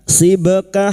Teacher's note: huruf ba yang mati asli di tengah kalimat qalqalah sugro. Jangan lupa dipantulkan.